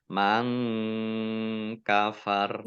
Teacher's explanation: Nun sukun bertemu dengan huruf kaf, bacaan ikhfa, dibaca samar-samar